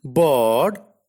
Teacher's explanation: A is a central unrounded vowel between half close and half open. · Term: long A